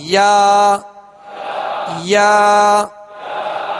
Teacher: یا کا جو مخرج ہے جیم شین یا، بیچ زبان بیچ تالو، اس سے ادا ہوتے ہیں